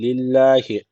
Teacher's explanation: Allah lafzı burada ince okunacak. Çünkü öncesindeki harf alttan bağlanıyor.